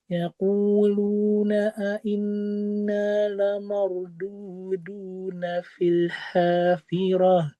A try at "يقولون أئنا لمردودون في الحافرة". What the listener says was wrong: Maknya lebih tipis sedikit lagi. Inna la marduduna. Iya, betul.